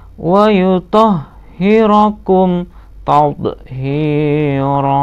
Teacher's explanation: Wa yutahhirakum, mim sukun bertemu ta. Nah, ini bukan ikhfa safawi ya, tapi ini idhar ya, idhar safawi. Bacanya idhar safawi, harus jelas.